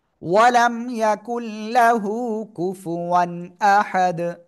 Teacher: অক্ফ করলে দাল সাকিন কলকলা হবে